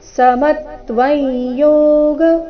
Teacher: ಅನುಸ್ವಾರದ ಉಚ್ಚಾರಣೆ ನಾಸಿಕ ಯ ರೀತಿ. ಕಾರಣ ಮುಂದಿನ ಶಬ್ದ ಯೋಗ ಅವರ್ಗೀಯ ವ್ಯಂಜನ ಯದಿಂದ ಪ್ರಾರಂಭವಾದ ಕಾರಣ.